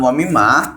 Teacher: Gunnah dalam surah Al-Baqarah ayat 3 ini terjadi karena ada huruf mim tasydid, membaca harus didengungkan kira-kira 2 sampai 3 harokat